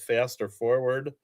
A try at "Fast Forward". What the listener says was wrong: You said Faster Forward.